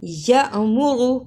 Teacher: یا پہ چھوٹا سا جھٹکا لگایا اور را کو پر پڑھا